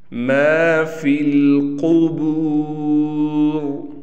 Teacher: قاف کو موٹا پڑھا جائے گا، را کو بھی موٹا کر کے پڑھیں گے۔